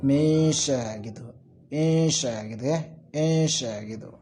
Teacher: membaca samar-samar antara nun dan sya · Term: ikhfa